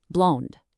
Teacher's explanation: For blonde, you have to lean into the nasal sound, but ensure you hit a soft D at the very end. Blonde.